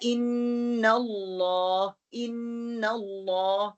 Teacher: letter लाम is heavy इन the name of majesty अल्लाह सुब्हानहू व तआला when it is प्रेसीडेड by the फतह और अदम्मा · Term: लाम जो मोटा